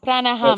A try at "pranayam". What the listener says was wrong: Yes. Not ham, pranayam.